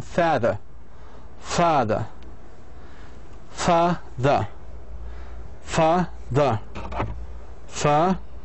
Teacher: the second syllable which is weak is shorter